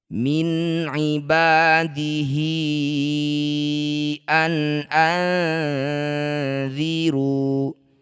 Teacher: Panjangkan hi lima harakat atau lima ketukan. · Maka ini disebut bacaan namanya mad silah tawilah. Panjangkan hi 5 harokat atau 5 ketukan. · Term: mad silah thwilah